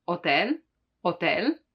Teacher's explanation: the H is always mute in Italian, so you don't pronounce it